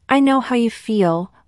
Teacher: notice the emphasis on feel the speaker wants to show empathy and understanding